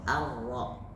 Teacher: Karena ketika ro itu getarannya cuma 2 kali, Pak. Takrir namanya, tapi cuma 2 kali. Ar-ro, tidak ar.